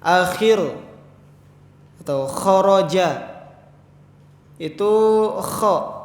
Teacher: Keluar dari tenggorokan dan menebal. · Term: huruf kha